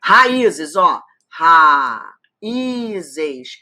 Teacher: Esse I é tônico, forma o hiato, tá sozinho na sílaba.